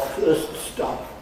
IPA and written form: ˈfɜːst ˋstɒp (first stop)